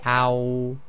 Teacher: when you say ow the back of the tongue raises up